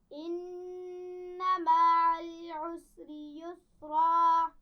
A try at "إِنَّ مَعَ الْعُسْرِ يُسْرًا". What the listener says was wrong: عین کو واضح کیجئے. مع العسر.